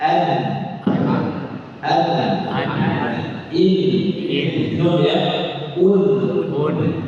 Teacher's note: ujung lidah yang bersentuhan dengan langit-langit di bawah tempat keluarnya huruf lam, lebih dekat ke gusi gigi seri atas